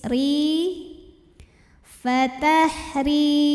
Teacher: Huruf ra dibunyikan secara tarqiq sebab berbaris kasrah, maka dibacanya tipis